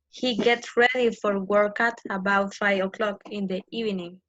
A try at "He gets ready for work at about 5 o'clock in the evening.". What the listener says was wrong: Okay, but don't make any pause. Don't make any pause. He gets ready for work at about 5 o'clock in the evening.